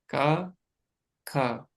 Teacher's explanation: क और ख को आप चाहकर भी इसमें वाइब्रेशन के साथ नहीं बोल सकते।